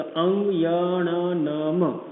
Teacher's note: અને અહીંયા અનુનાસિક છે તો અંગ યણ નમ આ 5 જે છે આપણા નાસિકામાંથી ઉત્પન્ન થાય છે